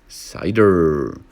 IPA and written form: ˈsaɪdər (cider)